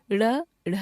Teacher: इनका उच्चारण ड, ढ से भिन्न होता है। इनका उच्चारण जीवा को तालु की ओर मोड़ कर किया जाता है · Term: नव विकसित व्यंजन